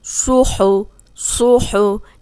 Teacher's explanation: صاد موٹا ہے، ہا حلق سے نکلے گا